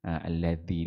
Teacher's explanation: alladzi dalal tu pastikan dia antara dua dua gigi